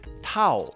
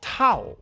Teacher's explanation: เท่า is a short word that falls as you say it.